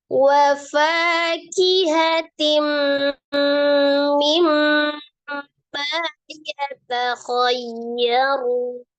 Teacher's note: Maka dibaca kemudian ro-nya itu di situ ada ro dhammah, maka dibaca dengan tebal ro-nya